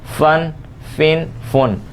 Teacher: جب فا پڑھتے ہیں تو اوپر والے دانت اور نچلا ہونٹ کا تر حصہ یہ ہمارا آپس میں ملتا ہے